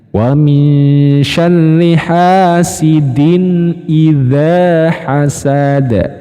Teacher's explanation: Baru yang terakhir hasad menggunakan dal dipantulkan.